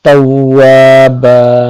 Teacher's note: ইন্নাহু কানা তাওয়াবা, তাওয়াবা আলিফের পূর্বে জবর, তাওয়া এক আলিফ পরিমাণ লম্বা হবে। বা বান হওয়ার কথা ছিল কিন্তু ওয়াকফ করার কারণে এখানে একটা জবরের উচ্চারণ হবে এবং আলিফ থাকায় একটা জবরের সাথে মিলে এক আলিফ পরিমাণ লম্বা হবে।